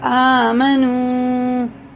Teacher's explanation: یہ نون پہ پیش ہے، واو پہ جزم ہے، تو یہ حرف مدہ ہے واو، تو الٹے پیش کی طرح سے کھینچ کے پڑھیں گے، اور اسے بھی الف کو بھی ایک الف کے برابر آمنو، ٹھیک ہے.